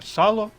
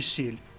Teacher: в першому слові сало звук с твердий в другому слові сіль м'який в першому слові звуку л твердий а в другому м'який знак